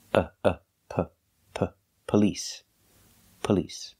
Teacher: the first syllable we do not say police it's police police because the stress is on the second syllable the first syllable is pronounced relaxed